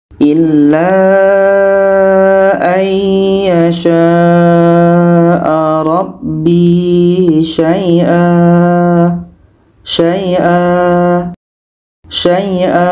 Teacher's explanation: Jadi kita harus berhenti. Maka ketika tanwin atas letaknya di akhir, tanwin ini kita buang satu. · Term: mad iwad